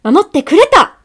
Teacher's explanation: That small tsu at the end is showing that she's like sharply ending what she's saying.